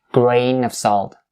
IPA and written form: ɡreɪ-nəv-sɔːlt (grain of salt)